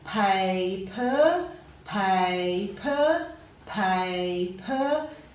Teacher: you can hear that long vowel sound at the end of that first syllable